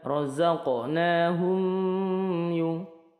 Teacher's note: Hum mim sukun bertemu ya ini dihukumi izhar syafawi jadi roqnahumyung tidak didengungkan rozaqnahumyung tapi mim sukunnya cukup dijelaskan